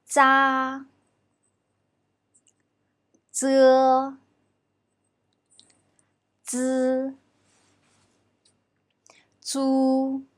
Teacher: When we pronounce Z, the front part of the tongue tip touches the inner surface of the upper teeth and then immediately parts with it, forming a gap in between. It is pronounced with no strong airflow. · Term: dentals